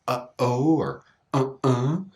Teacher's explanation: the glottal stop is using that piece of muscle to stop the air, often at the beginning of words or between vowel sounds